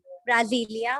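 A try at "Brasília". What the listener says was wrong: ब्रासीलिया, ठीक है। एक बार दोबारा बोलो, ब्रासीलिया। ब्राजीलिया नहीं बेटा, ब्रासीलिया। एस है ना?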